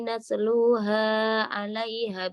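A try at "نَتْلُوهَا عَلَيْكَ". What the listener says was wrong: Nasluha 'alaika bukan 'alaiha.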